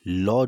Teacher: जिस व्यंजन के उच्चारण में वायु जीभ के दोनों पार्श्व यानी साइडों से निकलती है उसे पार्श्व व्यंजन कहते हैं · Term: पार्श्विक व्यंजन